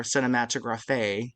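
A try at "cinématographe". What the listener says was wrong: The accent's on the middle E, actually, not the end. It is pronounced cinematograph. Yes, and it's a French word.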